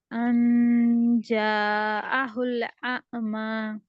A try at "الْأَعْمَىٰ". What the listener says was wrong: اعمى عین اعمى. جھٹکا نہیں دینا. ان جاءه الأعمى.